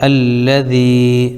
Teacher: یا ساکن سے پہلے دال کے نیچے زیر ہے، اس لیے یا مدہ ہوگا، ان کو تھوڑا کھینچ کر پڑھیں